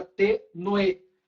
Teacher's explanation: O ditongo é crescente porque o som mais forte é o último das duas, entendeu? Se eu pegar a palavra tenue entre o U e o E é mais forte. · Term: ditongo crescente